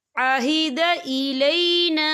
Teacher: یہاں پہ خالف سے پہلے زبر ہے اور اس پہ چھوٹی سی مد بھی ہے، تو ہم اسے 3 یا 4 حرکت کے برابر کھینچ کے پڑھیں گے۔